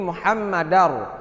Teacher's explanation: Baris 2 fathatain bertemu dengan ra, idgham bila gunnah, maka dibaca Muhammadar tanpa bertasydid dan ra-nya dibaca dengan tebal.